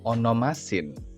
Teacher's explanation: Ketika huruf tau di akhir kata onomat bertemu dengan sigma, maka huruf tersebut akan berubah menjadi sigma. Sehingga kita mengucapkannya bukan onomatsin, melainkan onomasin. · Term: stop dental